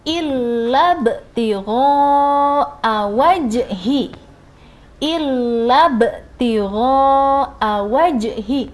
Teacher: Ba sukun dan jim sukun itu termasuk hukumnya qalqalah. Jadi saat dibaca harus agak dipantulkan seperti ini.